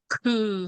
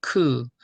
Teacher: 더 바람을 크게 부리고 힘을 주면 크 하게 되죠 크 그래서 바람이 더 많이 나가서요 아까이 목구멍이 없어지고 요거만 남은